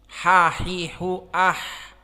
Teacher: ha di sini makhrajnya wastul halq